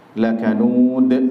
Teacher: Lakanud di situ ada mad arid lis sukun, boleh dibaca 4, 5 atau 6 harokat. Sekalian di situ ada qalqalah kubra karena ada di akhir ayat, disukunkan di situ.